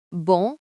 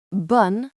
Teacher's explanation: the difference between bon good and bun good feminine is entirely about that nasal sound